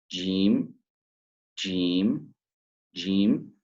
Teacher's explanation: So the middle of the tongue meets the hard palate, jim. So you can feel that the middle part of your tongue touches your palate.